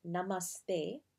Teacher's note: namaste with a hard th and an emphasis on the second syllable